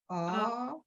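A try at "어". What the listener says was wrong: C'est pas un ou, c'est un ou ouvert. Alors, on ne dit pas ou, mais on dit O.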